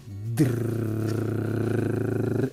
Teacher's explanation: c'est bien le bout de ma langue, et je dis bien le bout de ma langue, qui se met à vibrer comme ça et à taper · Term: R roulé